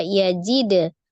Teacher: Yajid ada dal sukun qalqalah. Karena dia di wasol atau di tengah-tengah, maka qalqalahnya sughra saja ya, kecil saja.